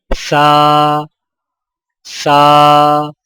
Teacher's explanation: سا کی ادائیگی میں زبان کی نوک کو سامنے والے اوپر کے 2 دانتوں کے اندرونی کناروں سے نرمی سے لگا کر باریک آواز میں پڑھیں